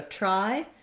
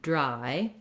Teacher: there's less air coming out and my voice is on for the D. So try versus dry.